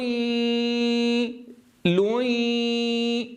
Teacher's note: نسمع صوت الياء ونسمع الغنة